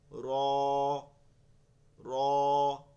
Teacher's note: জিবার আগাটা একটু ঘুরে যায় গিয়ে এই তালুতে গিয়ে লাগে